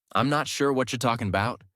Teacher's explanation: Match the reduced I'm not sure. The linked whatcha. The flow of talking about not talking about.